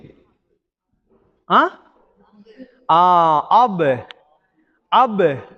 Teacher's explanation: அந்த பா வந்து எங்க இருந்து வெளியாகும் உதட்டுடைய உதட்டுடைய காய்ந்த பகுதி அப்ப அதுல பட்டு என்ன செய்யணும் இரண்டா வரணும் அப் எப்படி அப் ரைட்